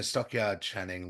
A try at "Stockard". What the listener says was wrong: It's not Stockyard, it's Stockard. You said Stockyard. I don't think there's a Y. Is there a Y in the middle of